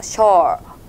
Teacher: 살짝 그냥 벌려주시고 오와 어의 중간에 음을 내주면 돼요